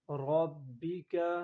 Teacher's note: را کو پر پڑھیں گے تشدید کی وجہ سے مضبوطی کے ساتھ